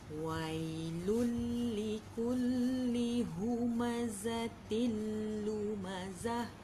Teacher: Wai sahaja yang baca 2 harakat.